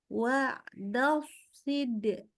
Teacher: dari dal itu shotnya bagus tebel, tapi pas baca si-nya malah jadi tipis.